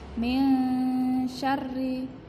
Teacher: Jadi bacanya min syarri, nonnya dibaca samar karena ada non sukun bertemu dengan sin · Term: ikhfa